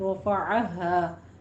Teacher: हा सीने की जानिब से निकलेगा मोटी आवाज़ के साथ